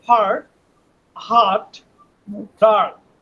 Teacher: টান হবে একেবারে মুখ খুলে দিয়ে আ